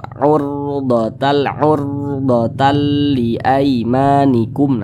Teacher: maka huruf ra sukunnya dibaca tebal, dibaca tafkhim, sehingga pangkal lisan kita itu naik terangkat ke atas ketika kita mengucapkannya. Huruf ra-nya itu ditebalkan.